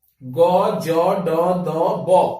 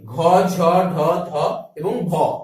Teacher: বাংলা বর্ণমালার প্রতিটি বর্গের তৃতীয়, চতুর্থ এবং পঞ্চম ধ্বনি উচ্চারণের সময় বেশি গাম্ভীর্যের সৃষ্টি হয় বলে এই সকল ধ্বনিগুলিকে বলা হয় ঘোষ ধ্বনি